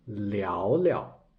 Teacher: 聊 is the second tone. But 聊聊, the second character will be untoned